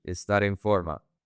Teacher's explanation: Connect the R and the E. Estar en forma.